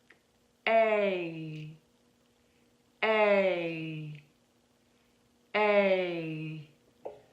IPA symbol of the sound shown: eɪ